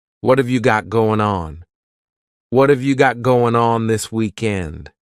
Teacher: That final G in the word going is going to be cut off, and we'll just say goin'.